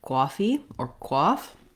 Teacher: more like quaffy or quoth because of the new york accent for the ah vowel they tend to use a little more aw more rounding and further back in the throat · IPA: ɔ